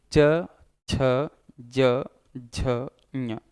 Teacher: जीभ ऊपर तालु से स्पर्श कर रही, इसीलिए इसे तालु या तालव्य व्यंजन के नाम से जानते हैं।